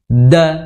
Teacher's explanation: Kalau yang tidak ada titiknya itu di belakang gigi ya, di pangkal gigi seri atas ya di belakang.